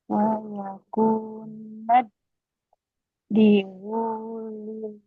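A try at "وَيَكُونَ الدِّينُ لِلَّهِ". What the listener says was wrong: Nah, nunnya nggak boleh panjang. Wa yakunad dinu lillah.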